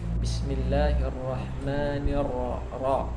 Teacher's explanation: Ra-nya tebal ya. Ra itu fathah sama dhammah dia tebal.